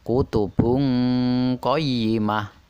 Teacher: dengan merubah bunyi nun mati atau tanwin menjadi Bunyi ng contoh kutubung Qoyimah ming-ming kuli M2 dengan menyamarkan dan mendengungkan bunyi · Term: Ikhfa